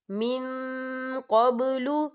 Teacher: یہاں دیکھیں من، یہاں نون ساکن ہے، نون ساکن کے بعد جو ہے قوف آ رہا ہے، اور قوف جو ہے اکفا کا ورڈ ہے تو ہم یہاں اکفا کریں گے، نون ساکن کی آواز کو ناک میں چھپائیں گے